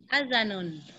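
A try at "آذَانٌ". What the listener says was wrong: Adanun, alifnya panjang Bu ya. Adanun, naam. Adanun.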